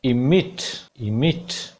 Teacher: मा पे primary stress है, आवाज सीधी फ्लैट होके ऊपर जाएगी, मिट, ऊपर जाके एकदम गिरेगी